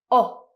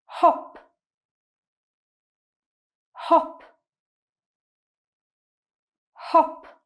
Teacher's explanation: when you produce this sound, your mouth is round, your tongue is very low in your mouth, and it's a very short sound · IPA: /ɒ/